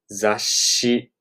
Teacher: You're rising your pitch as you're saying it. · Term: rising tone